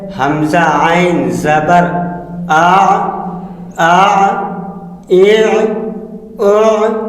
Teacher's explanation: عین ہا کے حلق کے درمیانی حصہ سے ادا ہوتے ہیں